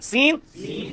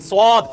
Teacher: सीन की आवाज को मोटा किया स्वाद बन गया